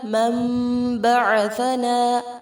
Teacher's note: یہاں اقلاب ہوگا، سا کو نرمی سے ادا کریں گے